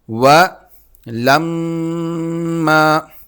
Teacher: میم پر جب تشدید ہے تو اس پر غنہ ہوگا، ناک میں آواز پیدا کی جائے گی۔ میم پر اور نون پر جب بھی تشدید ہوتی ہے تو اس پر غنہ کیا جاتا ہے، ناک میں آواز پیدا کی جاتی ہے۔